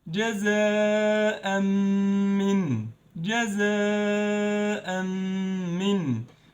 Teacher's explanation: We skipped the Tanween sound of Tanween, the Noon sound of Tanween, and instead of saying jaza'an, we said جزاء. We mixed those two words and we skipped noon sound with Ghunnah for 2 beats. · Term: idgham with Ghunnah